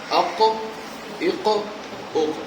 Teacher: قاف، 2 نقطہ والا. قاف ادا ہوتا ہے جب زبان کی جڑ اوپر کے تالو سے لگے.